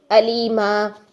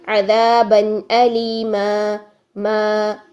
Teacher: वक्फ करते हुए एक अलीफ के बराबर जो है ना वो पढ़ लिया, ज़बर को लंबा करके